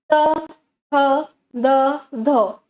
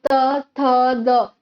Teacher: त का उच्चारण करने समय मेरा जिह्वा का अग्रभाग क्या कहते हैं, ऊपरी दांत को स्पर्श करके उस उच्चारण का संपादन करता है। तो त, थ, द, जिह्वा का अग्रभाग मेरे दांत और दंत को स्पर्श करके ही वो शब्द या अक्षर का संपूर्ण होना उच्चारण प्रतिपादन करता है। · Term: दंत्य व्यंजन